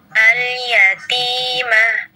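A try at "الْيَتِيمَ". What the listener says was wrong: Al-yatimah. Ya, jadi ada hembusan ya nafas. Hilangkan yang itu. Mah. Ya, jadi seperti ada huruf H di belakangnya ya.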